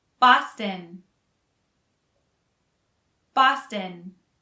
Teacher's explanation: the second o is not really pronounced